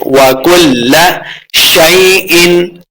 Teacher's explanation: اظہار کا قاعدہ ہے یعنی بغیر غنہ کے پڑھیں گے